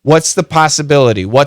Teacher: when we say it fast, the S is a strong sound, that TH can disappear.